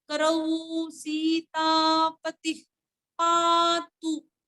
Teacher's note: पुढे असणाऱ्या विसर्गाचे उच्चारण फ सारखं